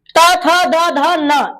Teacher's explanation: क्योंकि जब भी ये बोला जाएगा त थ द ध न तो ये दांत में आकर के दोनों दांतों के बीच में इसका साउंड आता है। दांतों से टच होता है। इसलिए इसको दंत वर्ण कहते हैं।